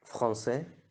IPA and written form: fʁɑ̃sɛ (français)